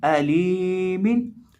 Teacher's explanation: लाम को एक अलिफ के बराबर लंबा करके पढ़ेंगे, क्योंकि इसके साथ याई मद्दा है।